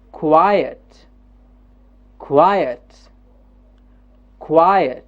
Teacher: there's a jump up at qui and a jump down at ut.